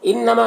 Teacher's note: انما، نون مشدد غنہ ہوگا، ماں میں الف مدہ ہے، ایک الف کے برابر کھینچیں گے۔